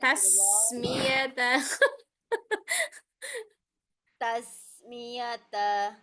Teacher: sinnya panjang aliran suaranya